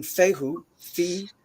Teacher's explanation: there's this pressurized high-pitched hiss of the F sound then an opening of the ooh and then right back to the constraint of the th sound